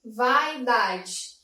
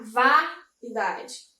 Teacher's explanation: Então, quando eu falo vaidade, esse A, vaidade. Esse A é a nossa vogal, enquanto o I é a semivogal. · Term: decrescente